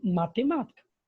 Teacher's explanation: a sílaba tônica, né, a sílaba que tem o som mais forte, é o ma. Então, logo, ma é a sílaba tônica, né, é a antepenúltima sílaba.